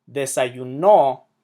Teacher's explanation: Desayuno puts the emphasis on the last syllable.